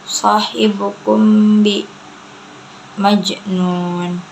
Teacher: qalqalah sughra karena ada huruf qalqalah yaitu jim di tengah-tengah kalimat, cara bacanya dipantulkan